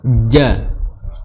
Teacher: makhrajnya adalah di tengah lidah bertemu dengan langit-langit atas